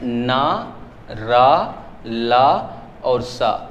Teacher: वर्त ध्वनि होती है जो दांत और मसूड़े के सहयोग से बोली जाए वर्त ध्वनि कहलाएगी।